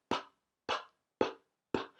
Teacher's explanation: When you make the sound of the P, your vocal cords don't vibrate.